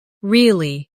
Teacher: With a falling tone to show you don't believe someone